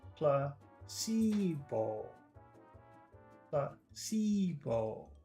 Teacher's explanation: Three vowel sounds in there. Placebo. Placebo. That's short, long, long.